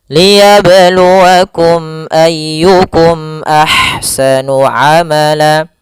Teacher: Sehingga kita membacanya adalah mim itu makhrajnya daripada bibir kita. Sehingga suara mimnya harus jelas dan tidak boleh ditahan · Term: izhar syafawi